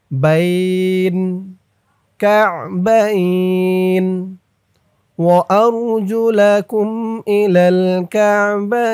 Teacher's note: লিনের হরফের পরে হরফে অক্ফ হয়েছে, তাই এই নুনের নিচে জেরটা সাকিন হয়ে যাবে, এখানে একালিফ টান হবে। বাইন কাবাইন ওয়া আরজুলাকুম ইলাল কাবাইন।